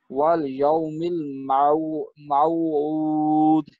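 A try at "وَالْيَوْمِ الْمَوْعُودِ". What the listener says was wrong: جی دال کا کلکلا نہیں ہوا آپ کا، باقی صحیح پڑھا آپ نے.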